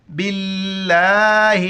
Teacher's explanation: جہاں پر لفظ اللہ سے پہلے پیش ہو یا زبر ہو تو لفظ اللہ کو موٹا کر کے پڑھیں گے، یہاں پر زیر ہے تو باریک کر کے پڑھیں گے ، بالام زیر، باللام کڑا زبر لا، ہا زیر ہے، باللہ،